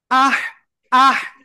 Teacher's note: গলাটা চেপে হালকা বাতাস বের হতে হবে